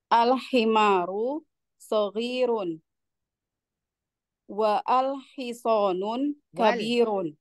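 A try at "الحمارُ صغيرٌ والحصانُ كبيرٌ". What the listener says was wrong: Wal ya, jangan wa'al. Wal hisonu. Tidak berakhiran tanwin ya.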